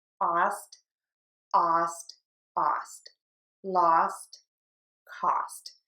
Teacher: we're going to touch the teeth for that t and air just puffs out